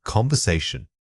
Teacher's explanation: let your voice rise slightly at the beginning and fall gently at the end.